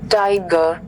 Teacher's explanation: In English prosody, a trough is a two-syllable poetic foot where the rhythm drops from a heavy, stressed syllable down to a light, unstressed syllable.